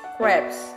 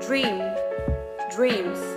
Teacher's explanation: S ending pronounced as the sound z after voiced non-strident consonant and vowels.